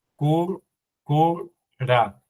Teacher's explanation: Se duplica la R de cur y se la liga con la A